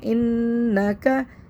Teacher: نون مشدد پہ غنہ کریں گے